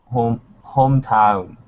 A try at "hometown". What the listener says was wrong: We have the N. The vowel's a little different now, but I want to make sure that N's coming out. So Thai and Vietnamese, you have an issue with the endings of your words. So make sure you're pronouncing those endings. Those are very important.